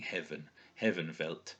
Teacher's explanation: you can see the F being pronounced like a V there at the beginning